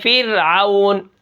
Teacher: را ساکن ہے پیچھے زیر ہے، اس کو ہم باریک پڑھیں گے